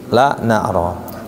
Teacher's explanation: Ujung lidah bertemu dengan gusi atas.